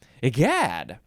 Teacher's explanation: You have to emphasize the second syllable.